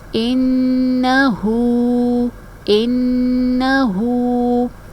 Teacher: الٹا پیش کو بھی ایک الف کی مقدار کھینچ کر بڑھا جاتا ہے